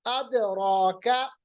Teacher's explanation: را کو موٹا پڑھیں گے کیونکہ را کے اوپر زبر ہے